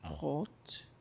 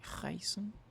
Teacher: So an example of the guttural sound is like rot, which means red, or reisen, which means to travel.